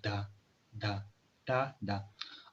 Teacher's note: तो जो dental sound होते हैं, ठीक है, तो उसको जो टिप ऑफ टंग है वो back area of teeth touch करते हैं, तो इसलिए इसको डेंटल साउंड कहा जाता है। These sounds are formed with the tongue tip behind the upper front teeth. · Tip of tongue है, बिल्कुल ये जो टिप होता है, ये जो अपर टीथ की बैक एरिया है उसको टच करते हैं